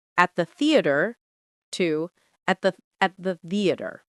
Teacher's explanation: Notice how the th blends with the words around it. There is no hard stop. Everything slides smoothly.